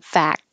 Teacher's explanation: you don't have to say the K but your tongue goes to the K position fact to stop the airflow and then your tongue is pressing